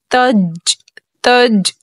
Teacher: اب یہاں جو جیم ہے، جیم پہ جزم ہے، جیم حرف قلقلہ کا حرف ہے اور قاعدہ ہے جب حرف قلقلہ ساکن ہو، یعنی اس پہ جو دال بنی ہوئی ہے جزم لگا ہوا ہے، یہ ساکن ہو تو جیم حرف قلقلہ میں خوب قلقلہ ظاہر کر کے پڑھیں گے